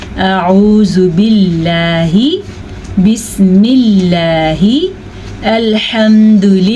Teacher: अगर लफ्ज़ अल्लाह से पहले कसरा आ जाए तो वो लाम बारीक पढ़ा जाता है